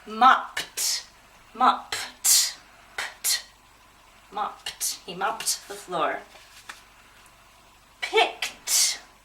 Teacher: all of these sounds are called what's called unvoiced that means if you put your hand to your throat that means you're not going to feel a vibration